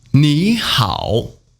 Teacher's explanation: 你 you 好 good well okay fine 你好 hello hi. Don't forget turn 你 into the second tone.